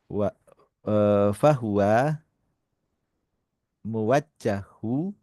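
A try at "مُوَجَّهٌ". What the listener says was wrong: muwajjahun. Muwajjahun. Tanwin.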